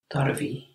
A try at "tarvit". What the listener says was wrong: Tarvit. You have the T. Tarvitsen, tarvit.